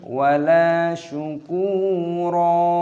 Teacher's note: Di sini huruf kaf dibaca sepanjang sukun wawu. Panjangkan selama dua ketukan. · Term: mad thabi'i